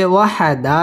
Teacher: ওয়াও ঠোঁট গোল করিয়া উচ্চারণ করতে হবে